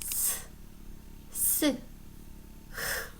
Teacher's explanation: 공기가 지나가는 통로를 좁힘으로써 마찰 시켜서내는 소리예요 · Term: 마찰음